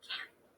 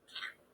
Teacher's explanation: between can and can is is the length of the word can will be a little longer and a little smoother than can't which will be a little bit more abrupt can can that's because of the stop T which makes that